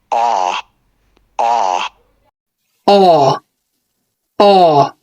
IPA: ɑː